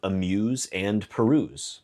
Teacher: the last stressed syllable is the last syllable and it's ooze. We can lengthen these words to amusing and perusing and it still works because oozing and oozing are the same. · Notice in that last example, the last stressed syllable is the last syllable, and it's ooze.